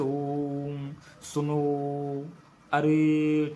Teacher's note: त्रिमात्रिक ये प्लुत स्वर होता है। इसमें क्या होता है? तीन मात्रा का समय लगता है।